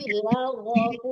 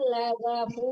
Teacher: Gha itu juga huruf tebal ya, tapi laghafu, jangan lagafu. Kalau lagafu ya tipis banget lainnya.